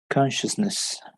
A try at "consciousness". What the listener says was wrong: Very good, right?